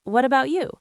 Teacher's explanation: Notice how my voice goes up at the end of the question.